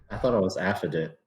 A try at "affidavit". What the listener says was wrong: No. You're missing A-V-I-T. An affidavit.